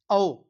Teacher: औ ना, तो ओष्ठ से, अर्थात होठ को भी मिलाना पड़ता है, मोड़ना पड़ता है, औ। तो औ हो गया।